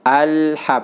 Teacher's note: kadang kita membaca alham, nah dibuat tebal, sedangkan la itu tipis ya, huruf tarqiq